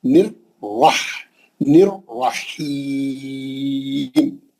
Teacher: نر کا پہلا را پتلا ہے، ہاں دوسرا را موٹا ہے، کیونکہ تجدید والے را میں دو را ہے.